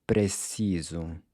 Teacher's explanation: Notice how the S is pronounced like a Z.